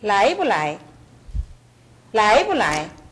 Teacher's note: 앞에 라이는 정확하고 뒤에는 약하게 난다는 걸 알 수 있습니다